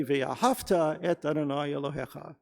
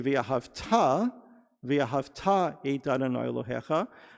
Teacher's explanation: actually the accent is not on the second syllable. The accent is on the last syllable.